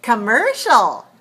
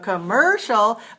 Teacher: very weak on the first syllable